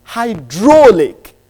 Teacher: it's got 3 syllables. But the lexical stress is on the second syllabic structure.